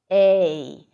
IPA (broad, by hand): eɪ